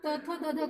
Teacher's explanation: जैसे त बोलते हैं तो हमारा जीभ जो है वह दांत के पिछले वाले भागों को स्पर्श करता है